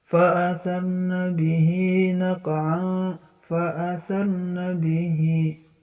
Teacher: Fa'athar ini ro dibaca tafkhim, ro dibaca tebal. Jadi ada ro ini jatuh setelah fathah, ro-nya mati, ro-nya dibaca tebal ya.